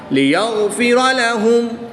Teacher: میم ساکن کو خوب ظاہر کر کے پڑھیں گے۔ لِيَغْفِرَ لَهُمْ، غین حروف مستعلیہ میں سے ہے تو اس کو پر پڑھیں گے · را پر زبر ہے تو اس کو پر اس لیے پڑھیں گے